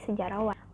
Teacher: fonem H pada dasar sejarah itu dilesapkan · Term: pelepasan fonem